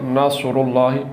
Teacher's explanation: نصر اللہ نہیں پڑھنا بلکہ اصل لفظ یہ ہے نصر اللہ، پر کر کے پڑھنا ہے، سیٹی کی آواز نکالنی ہے اور صاد کو پڑھنا ہے نصر اللہ۔ یہ دو حروف دال اور ضاد، ان دونوں حرفوں